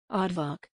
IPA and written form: ˈɑːrdvɑːrk (Aardvark)